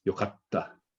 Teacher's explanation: you kind of skip over the k, but then double hit the t